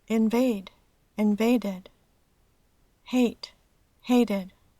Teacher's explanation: cuando el último sonido del verbo en su forma base termina en un sonido d como en need o t como want, la ed se pronuncia tal como se escribe. Eso añade una sílaba